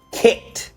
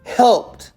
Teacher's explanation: No extra ed sound. Just a fast t at the end. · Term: The ninja sound